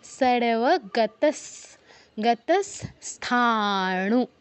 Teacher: সারেওয়া গতাস, আবারও দন্তস্ব হসন্ত, কারণ পরের যে যুক্ত বর্ণটা, এটা ভাঙলে আমরা পাই দন্তস্ব যুক্ত থ, প্রথম দন্তস্ব আসছে, অর্থাৎ বিসর্গর পর কী আছে, দন্তস্ব, তাই আমরা বিসর্গর জায়গায় দন্তস্ব হসন্ত উচ্চারণ করব।